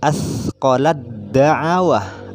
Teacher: Jadi ketika ada kalimat asqalat, ada tak mati, kemudian ada dal, da'awah, maka cara bacanya asqalat da'awah, artinya dari lam langsung ke dal tasydid. Seperti itu salah satunya.